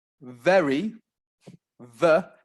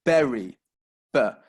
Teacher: The B, the lips are coming close together, B. But V, V, you've got your teeth coming to your bottom lip. The lips don't come together.